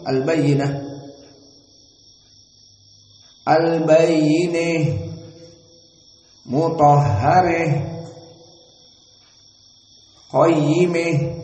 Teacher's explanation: And ta'nits because ta marbutah. So this ha at-ta'nits you read with al-imalah al-kubra only in the Imam al-Kisai